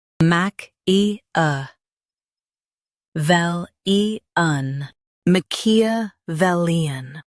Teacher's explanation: Emphasize vel and keep muck soft.